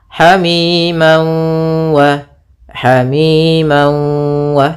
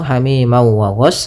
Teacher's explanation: masukkan tanwinnya ke wau sambil ditahan gunahnya dua harakat. Hamiman wa hamim wa tidak langsung hamima wa ghas tapi tahan dulu. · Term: idgham bighunah